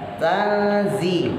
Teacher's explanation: Ifa, nun mati ketemu zai. Tazi, kalau zai ujung lidahnya taruh bawah ya, antara gusi dengan pangkal gigi bawah ya. Jadi antara gusi dengan gigi bawah.